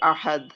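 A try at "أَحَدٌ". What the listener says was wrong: আহাদ কলকলা করতে হবে না। আহাদ ও আহাদুন সমস্যা নেই।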